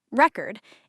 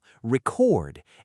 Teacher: As a verb, stress moves to the second syllable · As a noun, stress on the first syllable